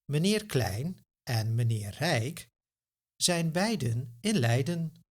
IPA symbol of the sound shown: ɛi